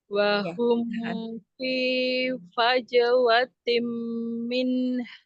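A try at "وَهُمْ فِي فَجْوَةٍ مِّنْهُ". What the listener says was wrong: Iya, masih kurang sedikit lagi ya mimnya ya.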